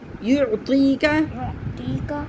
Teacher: ٹی نہیں ہے، طی، زبان آگے لے کے رہیں